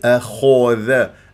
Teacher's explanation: الخاء من احرف الاستعلاء مفخم مرتبه ثانيه لانها مفتوحه من غير تكوير للشفاء